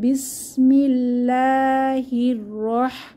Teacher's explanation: হা এর মাখরাজ খেয়াল রাখবো কণ্ঠনালীর মধ্যখান থেকে বাতাসকে চেপে বের হবে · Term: হায়ের মাখরাজ